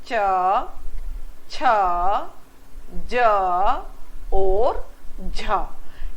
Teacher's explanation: कौन से व्यंजन उच्चारित होते हैं और इसके उच्चारण में मित्रों जो जीभ का आगे का भाग है अग्र भाग है और कठोर जो हमारा तालू है उसके बीच में स्पर्श छूना और संघर्ष होता है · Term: स्पर्श संघर्षी